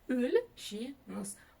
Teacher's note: Буква Л читается очень мягко, как будто бы с мягким знаком